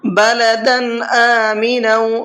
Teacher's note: تنوین کے بعد میں اظہار کے حرفوں میں سے کوئی بھی حرف آتا ہے تو وہاں تنوین کی آواز کو ظاہر کر کے پڑھتے ہیں